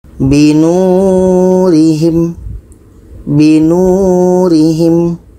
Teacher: Nu ini dibaca panjang karena ada waw mati sebelumnya baris depan.